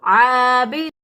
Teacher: ہے اور وسط حلق سے ادا ہوتا ہے، یعنی گلے کے درمیان سے عین ادا ہوگا